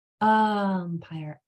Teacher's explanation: let me say it better I don't want to say ire I want to say ah with my jaw dropped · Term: short sound for U